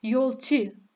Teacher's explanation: eklerin ince ve düz şekilde olması i sesiyle telaffuz edilmesi demektir